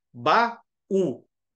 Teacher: das palavras a direita tá aí há um iato por nós temos duas vogais uma ao lado da outra na palavra só que elas estão divididas separadas por sílabas